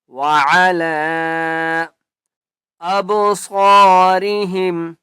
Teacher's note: لام کے اوپر چھوٹی مد ہے 3 الف کی مقدار کھینچ کر پڑھیں گے